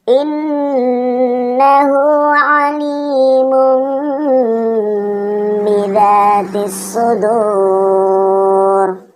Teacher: didengung sebanyak 3-4 harokat masuk ke huruf setelahnya dan didengung seolah-olah kita ingin menyebut huruf ba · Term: hukum bacaan iklab